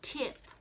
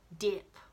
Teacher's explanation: When we make that t sound, we turn our voice off.